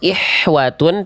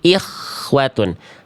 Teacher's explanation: Nah, H kecil itu karakter nafasnya lebih berbisik, lebih lembut, lebih clean. Kalau kho dia ada kresek-kresek kasarnya sedikit ya. · Pastikan kho-nya, makhrajnya, tempat keluarnya dari bagian terluar tenggorokan